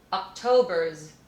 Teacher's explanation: because it's the last sound in a sentence i know i personally have a tendency to devoice it